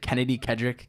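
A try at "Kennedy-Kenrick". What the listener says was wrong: Kennedy Kendrick. There's no D, but literally. Every other school would say Kendrick.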